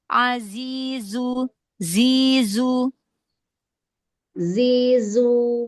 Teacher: Sofir itu suara yang tajam. Jadi harus jelas, harus tajam suaranya, harus kedengaran ya.